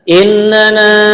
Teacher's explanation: mad jaiz munfasil. Ini tertibnya dipanjangkan 4 harokat